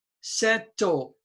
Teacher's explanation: the stress is on the first vowel so it's short sound